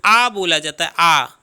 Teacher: देखिए यहाँ पे थोड़ा से समझ लीजिए, देखिए विवृत का अर्थ होता है खुला हुआ, तो यहाँ पे जो आ बोला जाता है आ, उसमें मुंह पूरा खुला रहता है तो वह विवृत है